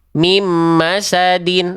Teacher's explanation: Nah, sekarang kesalahan ketiga pada nun sukun di hukum tajwid idgham bigunnah adalah dileburkan dengan dengung sudah nih bagus nih, tapi tergesa-gesa tidak ditahan 2 harokat. Harusnya ditahan dulu 2 harokat.